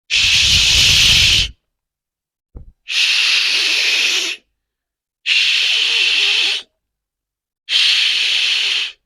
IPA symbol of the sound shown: ʃ